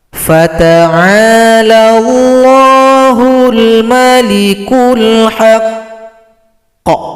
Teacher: kalau berhenti huruf qaf yang tasydid disukunkan, kemudian tunggu dua ketukan baru dipantulkan.